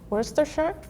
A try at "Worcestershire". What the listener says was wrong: A little bit more of an R sound in the beginning.